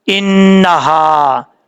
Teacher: اس کے بعد ہے آیت نمبر 7، حمزہ زیر نون ان، نون زبر نا، ان، ہا زبر الف ہا، انہا. نون کے اوپر شد ہے، غنہ کریں گے 1 الف کی مقدار. ہا بھاری ساؤنڈ کے ساتھ پڑھا جائے گا. · نون کے اوپر شد ہے، غنہ کریں گے 1 الف کی مقدار. ہا بھاری ساؤنڈ کے ساتھ پڑھا جائے گا. آگے الف ہے، لمبا کیا جائے گا 1 الف کی مقدار